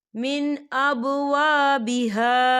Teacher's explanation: یہاں دیکھیں مین یہاں نون ساکن ہے اور نون ساکن کے بعد حمزہ آ رہا ہے، تو یہاں پر اظہار ہوگا اور ہم اسے بنا غننے کے پڑھیں گے